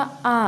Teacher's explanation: अगर आप आ बोलेंगे तो पूरा मुंह आपका खुला हुआ होता है, इसलिए विवर्त में सिर्फ एक वर्ड, एक स्वर आता है और वो है बड़ा आ।